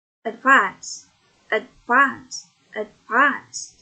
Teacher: untuk verb ini penekanannya pada, ya benar, pada silabel yang kedua.